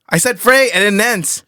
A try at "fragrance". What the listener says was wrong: Grants. G-R, bro. It's not Gantz, it's Grants. Fragrance.